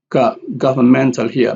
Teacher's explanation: Man here is the loudest and gov here is the second loudest.